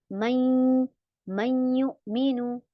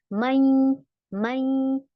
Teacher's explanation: यानी हम नून को मर्ज कर रहे हैं या में। नून को हम या में मिलाकर पढ़ रहे हैं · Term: इदगाम नाकिज